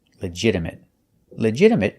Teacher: a stop T at the end